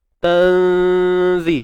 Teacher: Nun mati bertemu zai, nipis juga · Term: ikhfa hakiki